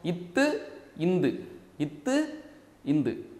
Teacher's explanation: நாவின் நுனி எங்க படுது இப்ப பல்லுல பட்டுருதா அதுவும் பல்லின் அடி பல்லின் அடி